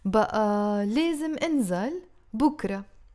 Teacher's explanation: you see how I'm saying the بقى as long?